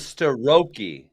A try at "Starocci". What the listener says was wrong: No, there's a cha in there, so we gotta get definitive with this. There's a cha.